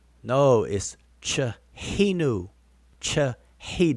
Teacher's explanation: The H is an aspirated H. It's a very airy H.